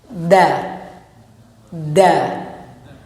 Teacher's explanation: makhraj huruf dal, ujung lidah bertemu dengan gigi seri atas